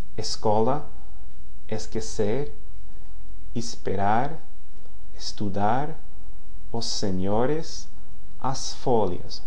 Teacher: So the final S in word or syllable final position sounds like S before a voiceless consonant.